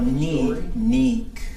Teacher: neek, low tone without the W would be news